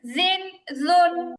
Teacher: থেকে আসে 13 নাম্বার মাখরাজ জিহবার আগা উপরে কথা হবে না জিহবার আগা উপরে দুই দাঁতের আগার সাথে লাগবে পাতলা এবং নরম করে উচ্চারণ হবে